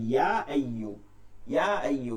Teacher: আইয়ু সামনে লম্বা হামজা থাকার কারণে ইয়া আইয়ু, ইয়া আইয়ু, ইয়াতে তিন আলিফ টান দিতে হবে, মাদে মুনফসিল।